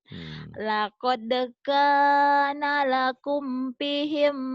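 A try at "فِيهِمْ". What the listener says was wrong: Fi-nya panjang.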